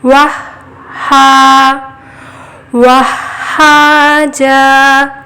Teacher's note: ہا پہ تشدید ہے، ایک بار واو سے ملا کر پڑھے واہ، اور ایک بار خود سے ہا، واہ ہا۔ واہ بولنے کے بعد ہلکی سی سانس لیں گے، ہا کی آواز آئے گی، واہ نہیں کرنا، واہ ہا، واہ ہا جا، وَجَعَلْنَا سِرَاجًا وَهَّاجًا۔